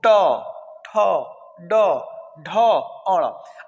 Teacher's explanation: इसका उच्चारण मृधा से होता है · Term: ट वर्ग